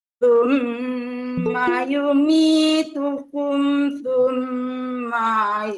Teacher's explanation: Ma tidak panjang. Sum itu gunnah itu yang panjang.